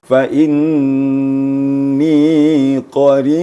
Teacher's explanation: Dia ada penekanan sedikit pada qarib.